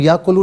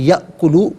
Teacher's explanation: हमज़ा जब साकिन हो तो उसे झटके के साथ अदा किया जाता है। इसे हम याकुलू नहीं बल्कि यअकुलू पढ़ेंगे। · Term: हमज़ा साकिन